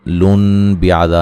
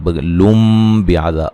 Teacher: نون تنوین کا اقلاب ہے، غنہ کر کے پڑھیں گے، نون کو میم سے بدل دیں گے، ٹھیک ہے۔ سائلون لن بیعذا نہیں، لم بیعذا، واضح طور پہ نون کو میم سے بدل دیں گے۔